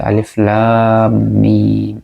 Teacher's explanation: এই হরফগুলো আমরা কিন্তু মদের মত করে লম্বা করে পড়ি